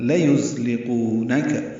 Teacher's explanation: یہ زا ہے، تیز صفیر کی آواز سے ادا ہوگا